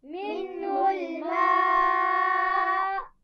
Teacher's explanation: منہ الماء، منہ کے نون ساکن پر غنہ نہیں ہے، اور ما یہاں پہ آپ دیکھ رہے ہیں بڑی مد ہے، اور آخر میں جب ہم وقف کریں گے تو حمزہ کو ساکن کر دیں گے تو یہ ہو جائے گا حمزہ ساکن. تو تھوڑا سا جھٹکے سے وقف کرنا ہے تاکہ حمزہ ساکن واضح ہو جائے